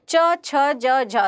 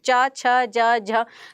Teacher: च, छ, ज, झ, तो आपकी जिह्वा तालु को स्पर्श करेगी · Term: तालव्य